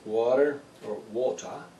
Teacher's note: you need to stress the first syllable